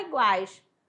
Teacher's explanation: Pode apertar o nariz e falar iguais. Não vai vibrar nada. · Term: tritongo